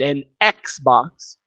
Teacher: an Xbox, it sounds like there's an E before the X